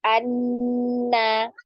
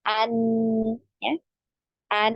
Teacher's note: Jadi makhraj ya dari nun, huruf nun adalah di ujung lidah ya, menempel pada gusi dari gigi seri atas.